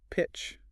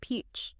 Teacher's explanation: Pitch uses a short, crisp I sound, relaxed jaw. Peach uses a long, smiling E sound.